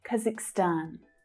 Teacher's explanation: So the stress there is on the final syllable.